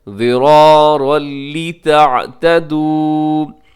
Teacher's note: ضِرَارًا لِتَعْتَدُوا، یہاں پر کیا ہے جی، ضِرَارًا، یہاں تنوین ہے، تنوین کے بعد لِتَعْتَدُوا کے شروع میں لام ہے، یعنی تنوین کے بعد لام آگئی ہے، یہاں ہم ادغام کریں گے غنہ کے بغیر، جی غنہ کے بغیر ادغام ہوگا۔